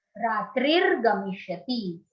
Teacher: In the first line, Ratrihi plus Gamishyati. This is the Sandhi where Visarga has changed to R.